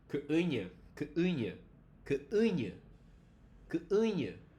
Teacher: this u becomes nasalized just because it's next to the nya. The nya is a source of nasality, right?